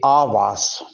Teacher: यहाँ पर अलिफ की मद को वाज़ेह करेंगे और कहेंगे आवाज